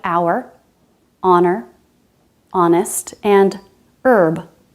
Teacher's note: There are some common words that begin with a silent H